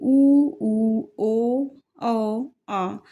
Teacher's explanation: वृत मुखी स्वर कहते हैं जैसे उ उ ओ औ आ जब हम इनका उच्चारण करते हैं तो हमारे होठ जो है वो गोल हो जाते हैं